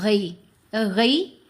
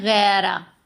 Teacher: پوری طرح آواز ٹیڑھی ہوگی، جھکاؤ کرے گی یا کی طرف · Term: لین